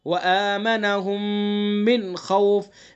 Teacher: میم کے بعد دوسرا میم تو غنہ کریں گے